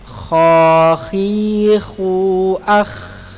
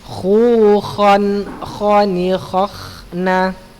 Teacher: Kha letaknya di tenggorokan atas ya. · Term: huruf kha